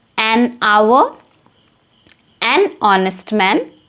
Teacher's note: So now, an is used in front of H, but remember where the H is silent and the pronunciation is like vowel sound, then we use an. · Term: silent H